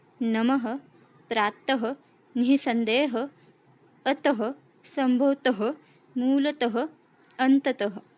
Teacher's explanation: विसर्ग वाले शब्दों का उच्चारण करते समय उसमें ह का उच्चार होता है